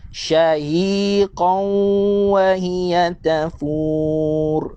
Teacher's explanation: Pada ayat ini tuan-tuan, kita nampak tanwin berjumpa dengan huruf waw. Tanwin berjumpa dengan huruf waw, hukumnya idgham. Idgham apa? Idgham bi gunnah. Senang je tuan-tuan. Kita masukkan tanwin ini ke dalam huruf waw.